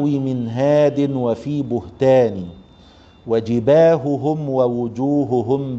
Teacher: والهاء تخفى والهاء تخفى يعني الهاء حرف ضعيف حرف ايه ضعيف اتصف بصفات ضعف كالهمس والرخاوه والاستفال والانفتاح